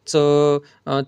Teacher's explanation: जिभेचे पाते टाळूला कठोर टाळूला लावून होणाऱ्या उच्चारांना तालव्य वर्ण असे म्हणतात.